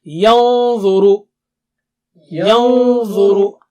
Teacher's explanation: when you keep your tongue tip close to the makhraj of dha, your Nun Sakina will also become thick and high